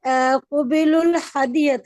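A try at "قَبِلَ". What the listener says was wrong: वो बिलू क्यों, हरकत देखिए पहले पे, पहले सिंपल पढ़ें।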